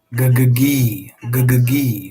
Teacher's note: the tongue pulls back for the G and then forward for the high e